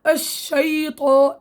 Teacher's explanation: اذا انت ممكن انت عم تدرب على المراية، رحتي قلتي مثلا الشيطان انا عم حرك شفتين، والشفتين ما بتحركوا بالشين، لانه اصلا الشين ليس من مخرج الشفتين، من وسط اللسان